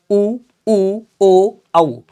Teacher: ऐसे स्वर जिनके उच्चारण में ओठों की स्थिति गोलाकार होती है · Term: वृत्त मुखी